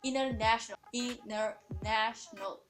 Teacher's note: third syllable have the stress